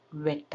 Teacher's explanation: WETಗೆ ತುಟಿ ರೌಂಡ್ ಮಾಡಿಕೊಂಡು ವೆಟ್ ಅನ್ಬೇಕು